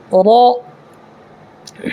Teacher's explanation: را کو پر پڑھنا ہے اس لیے کہ را کے اوپر زبر ہے، اس لیے را پر ہوگا.